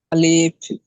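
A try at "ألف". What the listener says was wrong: আলিফ বলে টান দিয়েছেন, একটু খেয়াল করেন। আলিফ বলে টান দিয়েছেন, আলিফ, একটু টান হবে না।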